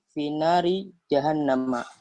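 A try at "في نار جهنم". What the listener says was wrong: Finari, jangan narin ya. Finari jahannam.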